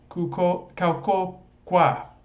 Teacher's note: we have secondary stress on this qua